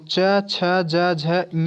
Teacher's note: च छ ज झ ञ जो है यह आपका किससे होता है तालू से होता है